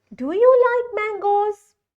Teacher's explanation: I have increased my voice at the end. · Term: intonation